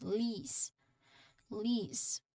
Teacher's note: There's a long e sound here. Your tongue is high and forward in your mouth also.